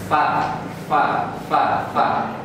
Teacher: Ini dia ujung gigi seri atas bertemu dengan bibir bawah.